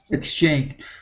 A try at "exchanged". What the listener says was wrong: Okay, and now here at the end, we don't want to say exchanged. Okay, we skip right to that D sound, exchanged. Now, this G ending with an ED is very difficult.